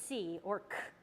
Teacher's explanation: our tongue goes back and upward in our mouth and our voice is not turned on our voices off for that sound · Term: velar sound